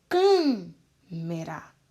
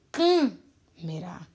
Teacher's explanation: O som do A não sai um som aberto, sai um som fechado.